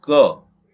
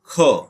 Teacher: अब यदि हम क की जगह पर ख बोलेंगे, ख, तो देखिए ख में थोड़ी हवा ज्यादा या वायु ज्यादा हमारे मुंह से निकल रही है, तो ये जो होता है ये हो जाता है महाप्राण की स्थिति में।